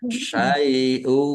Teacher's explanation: masuk dengan mendengung ya yaitu mendengung wau ditahan